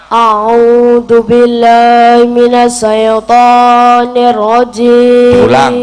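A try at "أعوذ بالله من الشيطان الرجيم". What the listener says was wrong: Ojo sae. Shin ya sukun fathah, syai bukan sae. Syai. Ayo diulang.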